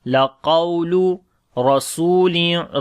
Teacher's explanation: Ra we read in heavy sound due to fatha sign on it.